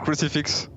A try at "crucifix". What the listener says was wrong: Un petit crucifix, c'est gratos.